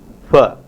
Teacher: there is a voiceless bilabial fricative fa